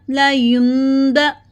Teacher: ٹھیک ہے، یون نہیں پڑھنا، نون کی آواز نہیں آنی چاہیے کیونکہ یہاں پہ ہم اقلاب کر رہے ہیں، نون کی آواز کو می میں بدل کے پڑھ رہے ہیں.